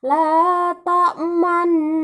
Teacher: hukum ismam tersebut dibaca la ta'manna, yakni seperti membaca huruf mim dan nun berbaris sukun. Pada kalimat ini hukum ismamnya pada kalimat la ta'manna.